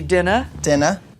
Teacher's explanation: the end of a word like in father sister brother theater in boston we're gonna drop the r forget about it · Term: weak er